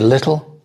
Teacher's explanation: British English is little, but most people don't make such a strong T sound in the middle. They'll say little, and American English is more little, with a D, little.